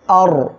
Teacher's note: র সাকিন তার ডাইনে জবর আসছে মোটা করে পড়বেন